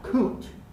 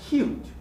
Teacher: the letter u is a bit different because it includes the glide it's not ooh but you right the y is part of